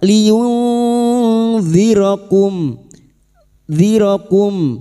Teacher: minkum minkum liun kum liun nun sukun bertemu dalal ikfa hakiki. Kita samarkan bunyi nun sukun dan mendengung selama tiga harakat. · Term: ikhfa hakiki